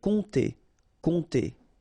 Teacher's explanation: you don't pronounce the P here, and then this OM together will produce the nasal on